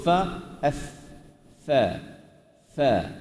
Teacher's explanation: huruf fa ni ialah bibir bawah yang menyentuh kepala gigi atas macam ni Huruf fa, f, fa, fa.